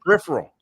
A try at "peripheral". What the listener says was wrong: You're putting vowels in there, homeboy.